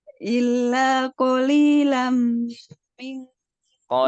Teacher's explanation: Mim ketemu mim, tambah panjang.